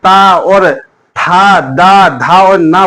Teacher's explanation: जब हम ता और था, दा, धा और ना बोलेंगे तो जो हमारी जीवा होगी वो किसको छूती हुई जाएगी? दांतों को छुएगी। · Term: दंतोष्ठ